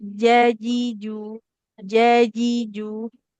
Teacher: Kalau makhrajnya tadi ya, tengah lidah menekan ke langit-langit atas